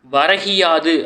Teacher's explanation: யாது இந்த சொற்களை சேர்த்து விரைவாக ஒலித்து பார்த்தா வரகியாது அப்படின்னு ஒலிக்கும் ஓகேங்களா முதல் சொல்லில் இறுதியில் உள்ள கூ என்னும் எழுத்து கின்னு ஒலிக்குது அதுவும் முழுமை ஒரு மாத்திரை அளவில் ஒலிக்காமல் அரை மாத்திரை அளவாக குறைந்து ஒலிக்கிறது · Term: குற்றியல் இகரம்